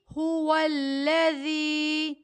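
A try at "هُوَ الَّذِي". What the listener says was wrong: هو الذی. زا کو سختی کے ساتھ نہیں پڑھنا، نرمی کے ساتھ پڑھنا ہے.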